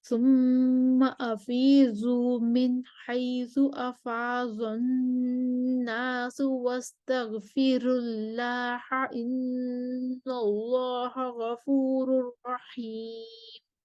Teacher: وَاسْتَغْفِرُ اللَّهَ پر ورش کے لیے ترقیق الراء ہے